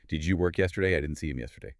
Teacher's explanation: Feel the pitch of your voice drop slightly as you say it.